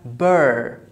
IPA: ɜr